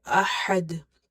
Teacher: Ha from the middle of the throat, and dal is again the qalqala letter